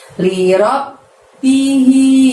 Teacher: Lalu hi-nya panjangnya 2, hi-nya tebel dari tenggorokan bagian bawah